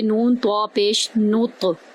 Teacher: نون کو طوا میں داخل کریں گے، طوا پر پھر ہم کلکلا کریں گے ، نون کو طوا میں داخل کرتے ہوئے نون طوا پیش